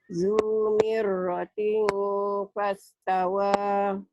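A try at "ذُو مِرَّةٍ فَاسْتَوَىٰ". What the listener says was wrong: Zumiratin. Jangan ting. Ikhfanya ada M-nya. Zumiratin fastawa. Bibir atas sama bibir bawah mingkem. Zumiratin bunyi ember. Ember. Zumiratin fastawa. Bunyi M.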